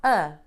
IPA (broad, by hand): ɐ